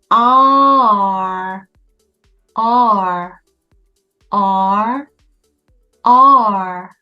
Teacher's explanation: 혀를 목구멍 가까이 R, R 뚱뚱하게 눕혀준다고 생각하시고요. 혀의 양끝, 여기가 윗니에 달라붙는 느낌이 강합니다. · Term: R 모음